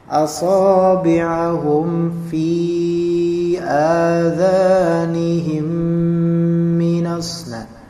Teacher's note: lihat mimnya melebur kepada mim berikutnya